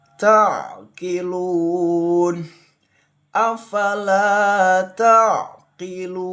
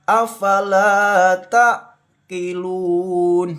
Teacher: Ain itu harus jelas. Hati-hati ditekan membacanya ditengkorokan paling ujung ya. Tailun ain ini termasuk rakhah ya. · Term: ain sukun